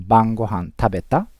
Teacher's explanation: We learned that in short form, casual conversation, we don't use the question particle か, but instead we use rising intonation to indicate it's a question.